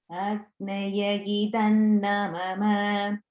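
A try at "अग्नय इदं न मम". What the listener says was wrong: Just notice the idam is like a regular da. Sometimes it sounds a little like you're saying dham, like idham, but just notice it's not a mahaprana. It's like the regular alpa prana, idam, idam.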